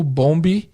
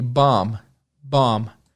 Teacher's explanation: muito mais curto a vogal muito mais aberta